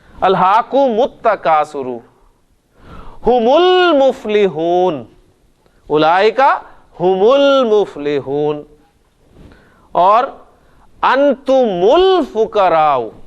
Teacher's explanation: حالانکہ میم ساکن تھا, کانسوننٹ تھا, لیکن آپ نے اسے پیش دے کے ملایا. یہ اصل میں وہ زبان کا فلو ہے.